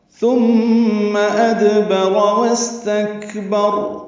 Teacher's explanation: ادبر میں دال ساکن پہ قلقلہ